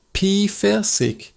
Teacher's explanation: That p sound at the beginning is quick like a puff of air. Peric. The ending is a soft sound from your throat. · The ending ish is a soft sound from your throat.